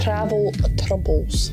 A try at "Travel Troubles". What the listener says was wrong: It sounds like you're saying Travel Truffles.